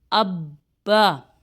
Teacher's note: جیسے دیکھیے حمزہ زبر با، اب ہمارے ہونٹ بند ہو گئے، اب دوبارہ ہم نے ہونٹوں کو کھولنا نہیں ہے۔ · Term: تشدید